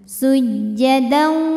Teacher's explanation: wau maka tanwinnya dileburkan atau dimasukkan ke waauw disertai bunyi dengung jadi kita tahan dulu sujjada sampai masuk hidung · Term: idgham bhunah